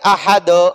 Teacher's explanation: دال کو جھٹکا دیں گے، احد، یہ دو کی آواز آخر میں نکالیں گے، اس کو قلقلہ کہتے ہیں۔